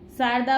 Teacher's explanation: शारदा वाली श तालव्य होती है